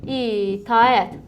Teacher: A-ə yanaşı gələndə sadəcə A saiti uzanır. Biz ora Y artırmırıq.